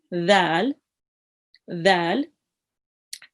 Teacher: It will be read softly. Again, your tongue touching the top of your teeth and just read as dal